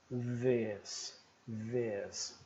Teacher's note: Agora nós temos o som do TH, que é a bolinha com a cruz, só que vozeado. Então ele vai vibrar como se fosse Z.